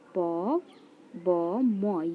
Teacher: प वर्ग का उच्चारण स्थान होता है ओष्ठ से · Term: ओष्ठ ध्वनि